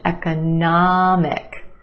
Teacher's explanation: we have a schwa in the second syllable